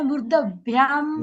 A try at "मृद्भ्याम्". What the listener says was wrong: मृदभ्याम नहीं दो आधा मृदभ्याम।